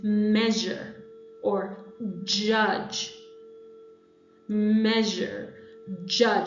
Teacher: the postalveolar, which is the tongue just behind the alveolar ridge